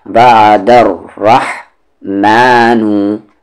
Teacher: corner, وعدر، عین کا مخرج مڈل تھروٹ بیچ والا حلق، وعدر، را کو ہیوی کریں گے کیونکہ اس کی ساؤنڈ اوپر ہے